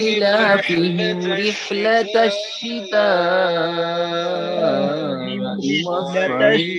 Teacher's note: لا ای دونوں مد ہیں، دونوں کو برابر کھینچا جائے، ایک الف مد ہے کے برابر ہے، ایک یا مد کے برابر ہے، دونوں کو برابر۔